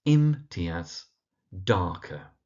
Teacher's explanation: in Imtiaz, emphasis on the im, and in Darker on the dark